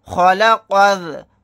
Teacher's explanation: قاف کو ذال کے ساتھ ملائیں گے، الف اور لام نہیں پڑھے جائیں گے